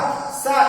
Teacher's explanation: जब कहते हैं सा को तो दांत से होते हुए वायु निकलती है, तो इसको हम कहते हैं सा, इसको दंती सा कहा जाता है।